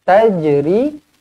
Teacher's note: Tajri, jim di sini dilantunkan qalqalah sughra.